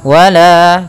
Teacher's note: Mad thii panjangnya dua harakat